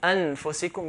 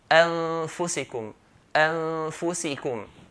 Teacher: he did not make the nun clear · But he made ikhfa here, which means he hid the nun.